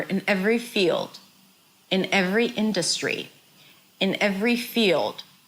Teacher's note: So in is reduced, every is a little longer, and field, that's the stressed word. This word is higher in pitch and longer.